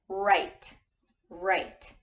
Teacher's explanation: which means that W is silent it's not right right right you don't hear the W sound you only hear the R sound